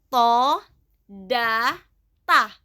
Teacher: ujung lidah bertemu dengan pangkal gigi seri atas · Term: nith'iyah